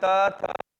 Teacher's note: त का उच्चारण स्थान दंत थ का उच्चारण स्थान दंत